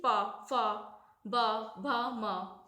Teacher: दोनों होटों के टच से बोले जा रहे हैं · ओष्ठ होते हैं दोनों होठों से जो बोले जाते हैं